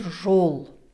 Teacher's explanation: Звук О глубокий, задний, язык дальше назад, например, жол.